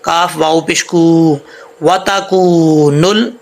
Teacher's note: وَتَكُونُ کاف کے آگے واو ہے، اس کو لمبا کریں گے، واو ساکن ہے